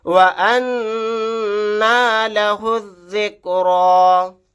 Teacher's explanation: نون کے اوپر تشدید آ گئی، یہاں پر غنہ کر کے پڑھیں گے. ہا کو ڈائریکٹ ذال کے ساتھ ملا دیں گے، الف اور لام نہیں پڑھے جائیں گے، لاسٹ میں یا بھی نہیں پڑھا جائے گا.